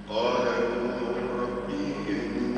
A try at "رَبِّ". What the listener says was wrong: كيف نقول ربي؟ ايش عملنا؟ زدنا يا. اقراها كما هي مكتوبة. قال ربي.